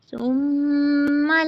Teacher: نون مشدد کا گننا 2 کاؤنٹس ہوتا ہے پورا، ٹھیک ہے، اس کو پراپر ناک میں آواز لے جا کر اس کا گننا کریں گے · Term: میم مشدد